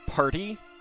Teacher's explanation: there's a p there's a puff that's aspiration so it's an aspirated P